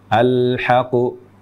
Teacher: ini kurang satu huruf harusnya double huruf qnya · Artinya huruf qaf yang tadi bersyaddah, bertasydid ini double qaf, 2 huruf qaf terucap menjadi 1 qaf saja. Jadi terucap seperti ini, al-haqqu. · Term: waqaf dengan tanpa tasdid, waqaf dengan tanpa tasydid